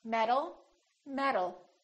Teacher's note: these two sounds sound exactly the same because the T changes into a d when it's between two vowels